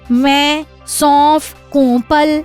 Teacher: अनुनासिक के उच्चारण के समय वायु मुख और नाक दोनों से निकलती है।